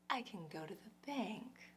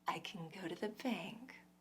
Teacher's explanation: if we add a noun the noun becomes more important than the verb and the verb gets into this quick light part